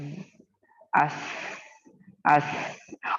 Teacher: जब आप सीन अदा करोगे बनिस्बत जा और सौद के, आप सीन में सीटी की आवाज ज्यादा महसूस करोगे। · ये हुरूफ अपने मखरज से सीटी की तरह तेज बारीक आवाज से अदा होते हैं। So whenever you pronounce these letters of huruf safir, you will find a whistling sound in that. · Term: सफीर, हुरूफ सफीर